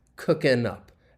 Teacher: And often when that G is dropped, it just makes this easier to say because linking can occur. And we can link that final N sound with up